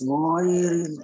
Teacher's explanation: Kenapa ghain dibaca tebal? Istilah. Karena ghain memiliki sifat isti'lah, ya, makanya baca tebal.